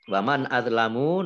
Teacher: nun sukun bertemu alif idhar dibaca jelas. Azlamu do-nya do sukun itu bukan kolkolah ya.